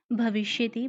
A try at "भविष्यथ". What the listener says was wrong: चलिए इनका बिल्कुल उच्चारण स्पष्ट है, बस भविष्य था पूरा बोलना है, मध्यम पुरुष के बहुवचन में भविष्य था, ठीक है?